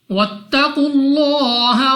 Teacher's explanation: لام اف اللہ سے پہلے حرف کے اوپر پیش تو اس لام اف اللہ کو بھی پوری یعنی موٹا پڑھیں گے. · قاف مستعلیہ میں سے ہے موٹا پڑھیں گے.